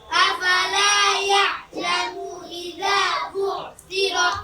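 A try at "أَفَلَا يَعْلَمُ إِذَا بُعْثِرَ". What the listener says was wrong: ইয়ালামু টানতেছে, এই যে এই লোক টানতেছে। হরকত উচ্চারণ কি টানিয়ে পড়তে হয় নাকি? তা কি করতে হয়? তাড়াতাড়ি। আফালা ইয়ালামু ইযা বুসিরা।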